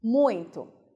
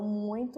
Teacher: Muito, as duas vogais são semivogais. Contudo, nesse contexto, o U ele vai se tornar o mais forte e o I vai ser o mais fraco. Então, esse U torna-se vogal nesse contexto e o I fica como semivogal mesmo.